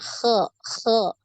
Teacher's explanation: Kalau huruf kha ini ada nafas. Nah, ada aliran nafas, makanya dia di pendengaran juga kurang jelas